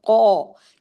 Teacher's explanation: قوف خود heavy letter ہے، اس کے ساتھ جو الف ہے یہاں پہ ہیوی ہو جائے گا، قو، یہ اس کو پڑھنے کے لیے آپ کی زبان اوپر نیچے اٹھے گی، منہ بھر کے آپ پڑھیں گے۔